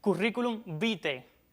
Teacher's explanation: Ese diptongo latino del final de la segunda palabra se recomienda que se pronuncie como E